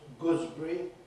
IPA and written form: ˈgʊzbri (gooseberry)